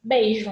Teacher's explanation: então eu tenho uma vogal mais forte depois uma semivogal mais fraca então é decrescente